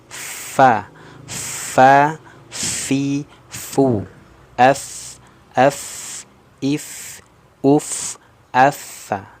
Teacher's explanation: gigi seri atas kita bersentuhan dengan perut bibir bawah bagian dalam. Nah, ingat, perut bibir bawah bagian dalam, bukan di luar. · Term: huruf fa